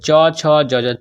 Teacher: छ का उच्चारण स्थान तालू होता है